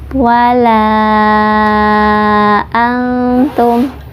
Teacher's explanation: Mad jaiz munfasil, sama ya seperti tadi di ayat yang kedua karena ada mad tabi'i bertemu dengan alif dalam 2 kalimah. Mad tabi'inya di la, kemudian alifnya di antum ya, jadi ini 2 kalimah, dibacanya 4 sampai 5 harokat.